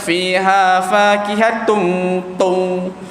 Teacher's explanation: Jangan kita baca fiha fakihatun tung. Huruf ta tu dia jadi macam tak ada langsung dia punya hamas tu. Dia jadi jahar. Sedangkan huruf dia ada angin.